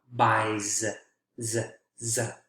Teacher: I is a voiced vowel sound. So the S is going to be voiced as well.